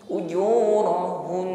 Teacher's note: Sekali lagi gunnah, dengung, gunnahnya akmal, gunnah paling sempurna. Ujurahun, tampakkan bunyi dengung di akhir huruf nun yang bertasydid.